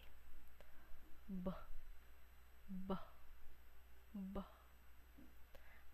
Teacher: Ang letrang P ay sinasaad sa paraan ng pasara ng walang tinig at puntong panlabi. At ang letrang B ay sinasaad sa paraan ng pasara ng may tinig at puntong panlabi